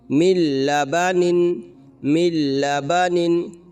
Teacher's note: یہاں پر بھی وہی قاعدہ اپلائی ہوگا کہ نون ساکن کے بعد حروف یرملون کے 6 حرفوں میں سے لام آ رہا ہے، اس لیے یہاں پر بغیر غنہ کے ملا کر پڑھیں گے اور اس کو ادغام بلا غنہ یا ادغام تام کہا جاتا ہے۔